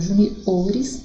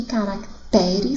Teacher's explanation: Porque quando eu faço a pluralização dessa palavra, a sílaba tônica troca de sílaba, ela anda, ela avança. Então, ó, júnior, sílaba tônica ju, e quando eu falo juniores, sílaba tônica o. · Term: a sílaba tônica avança